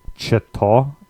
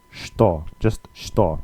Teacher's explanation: It starts with the ch sound, the ch, but obviously it's not ch-to, it's shto, just shto. So the ch changes into a sh sound.